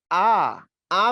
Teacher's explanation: আ বললে জীবটা নিচের দিকে চলে আসে এবং জীবটার অবস্থান মাঝামাঝি লেভেলে হয়